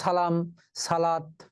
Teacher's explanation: এই শব্দগুলোতে কিন্তু আমরা দন্ত স দন্ত সই রাখবো, দন্ত স ছ এর মতো উচ্চারিত হয়।